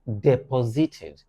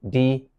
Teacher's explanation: deposited with a stress on the second syllable